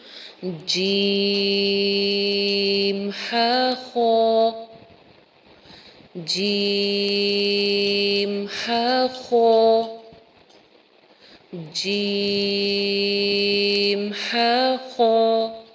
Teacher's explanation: اب جیم لمبا کر کے ہم پڑھ رہے ہیں، ہا خو چھوٹا پڑھ رہے ہیں